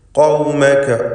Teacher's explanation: ഖാഫ് തഫ്ഖീം ചെയ്തുകൊണ്ട് സ്വരഭാരത്തോടെ ഖാഫിനെ ഉച്ചരിക്കുക